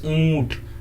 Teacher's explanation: जब चांद बोलते हैं तो मुंह भी खुलता है और अंग की मात्रा भी नाक से निकलती है। जैसे ऊंट मुंह से भी मिल रहा है और नाक से भी निकल रहा है। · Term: अनुनासिक स्वर